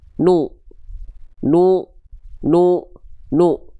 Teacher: Vokalnya vokal u. Harakatnya harakat domah. Dibacanya harus monyong. · Selanjutnya huruf nun di sini berarti kita baca enggak nun lagi karena itu nama asli. Cukup dia dibaca dengan bunyi vokal u menjadi nu. Pastikan bibirnya muncung. Pastikan bibirnya monyong ya.